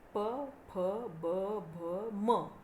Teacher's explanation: ओष्ठव्यंजने कोणती आहेत बघा. ज्यांचा उच्चार दोन्ही ओठांच्या साहाय्याने केला जातो त्या व्यंजनांना ओष्ठव्यंजने असे म्हटले जाते.